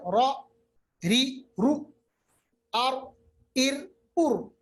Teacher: रा पढ़ते वक्त थोड़ी सी तकरीर होती है, जैसे ट्रैक्टर पढ़ते हैं ना, इसको सिफत तकरीर कहते हैं, ये सिर्फ रा में है।